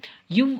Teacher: இவ் அப்படிங்கிறது மேல்வாய் பல்லை கீழ் உதடு பொருந்துவதால் பிறக்கிறது